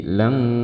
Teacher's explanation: saat melafalkan ikhfa pada huruf kaf, semua suara keluar melalui rongga hidung kita. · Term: ikhfa haqiqi